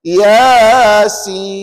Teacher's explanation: kena pastikan ya 2, sin 6.